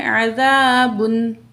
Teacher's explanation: با کی جو اوپر جو تنوین ہے اس کو ہم ظاہر کر کے پڑھیں گے